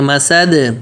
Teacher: میم پتلا سین پتلا اور دال پہ قلقلہ کریں گے.